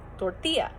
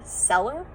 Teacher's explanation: Like if there's double L in Spanish, it makes a Y sound.